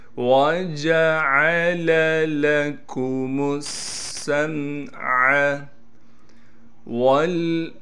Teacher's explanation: سین پر تشدید ہے اور سین میں سیٹی بھی ادا کریں گے · با حروف قلقلہ میں سے ہے اور با ساکن ہے لہٰذا یہاں پر قلقلہ یعنی آواز کو ہلائیں گے۔